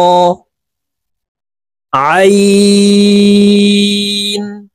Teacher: আইন হরফকে হালকের মধ্যখান থেকে চাপ দিয়ে উচ্চারণ করব, কারণ আইনের মাখরাজ হালকের মধ্যখান থেকে হবে।